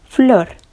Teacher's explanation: se unen los incisivos superiores al labio inferior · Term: Labiodentales